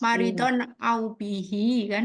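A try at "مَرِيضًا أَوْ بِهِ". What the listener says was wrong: Bihinya harus panjang. Kan tadi 4 harokat. Nah, tadi bacanya pakai 2.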